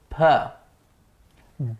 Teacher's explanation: The sound is being obstructed by both the lips. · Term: bilabial sounds